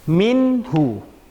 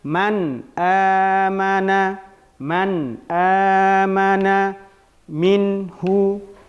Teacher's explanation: Ha ini masuk ke dalam huruf izhar halqi. Maka dibaca dengan jelas huruf nun mati tersebut. Jadi ini tidak boleh dibaca dengan dengung.